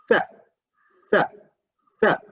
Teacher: So the tongue touches the upper teeth.